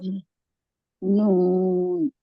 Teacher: नून को तो जबान की नोक सनाए औलिया के मसोड़ों से लगा रहे हैं हम। लेकिन साथ में नाक के बांसे से भी नाक की जड़ से भी आवाज आ रही है।